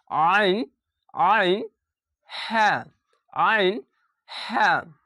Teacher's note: আইন হালাকের বা কন্ঠনালীর মাঝখান হতে উচ্চারিত হয়।